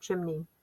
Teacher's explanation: it's going to have a long e sound on the unaccented syllable at the end